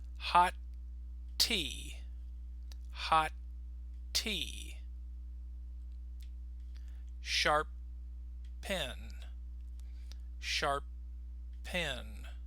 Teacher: we stop on the first sound and then we release or finish on the second